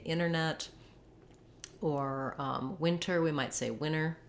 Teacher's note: with words that have NT, sometimes Americans will leave the T off. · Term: dropping of the T